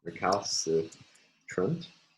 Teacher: the primary stress again falls on the third to last syllable. The second to last syllable is again light if we assume that this sequence tra becomes an onset in the last syllable.